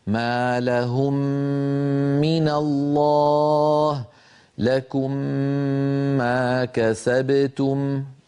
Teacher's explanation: فلما ننطق هاتين الميمين نرفع عنهما الشفتين ارتفاعة واحدة، نطبق على الميم الأولى ونجافي الشفتين عن الميم الثانية، وأثناء إطباق الشفتين على الميم الأولى نمط الغنة